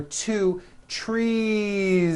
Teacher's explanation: it's not tree with an unvoiced s its trees with that voice ending